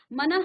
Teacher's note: इस विसर्ग को ह आधा ह की तरह पढ़ा जाता है